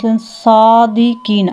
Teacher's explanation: صاد جو ہے موٹا ادا آتا ہے، موٹے حروف میں سے ہے صاد، اور یہ حروف صفیریہ میں سے بھی ہے، اور اس میں سیٹی کی آواز آتی ہے